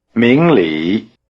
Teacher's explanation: Notice that the tones are rising low.